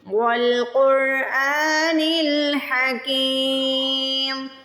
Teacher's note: حمزہ کے اوپر کھڑی زبر ہے، حمزہ کو اسٹریچ کریں گے، کھینچ کے ادا کریں گے